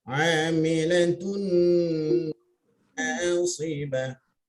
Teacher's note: Kemudian pada tun itu yang bunyi tun, bunyi terus masuk pada nun. Amilatun rapatkan hujung lidah dengan hujung langit-langit tu lidahnya. Kemudian bawa dengungnya.